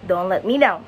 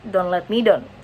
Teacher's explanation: the diphthong, ow, in down, is replaced by the monophthong o, a sound more common in Indonesian or Javanese.